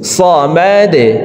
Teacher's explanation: দাল যেহেতু কলকলার হরফ, নিচের দিকে ধাবিত করে ধাক্কা দিয়ে সাকিন করব